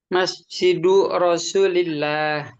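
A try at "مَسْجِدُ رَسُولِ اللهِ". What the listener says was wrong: Rasuli apa? Lahnya sukun nih. Lillahi ya,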